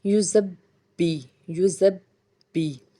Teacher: बा को 2 बार अदा करेंगे क्योंकि बा के ऊपर तशदीद है